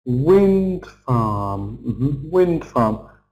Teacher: It's a compound noun, isn't it? So, we're stressing the first syllable. It tells us what kind of farm.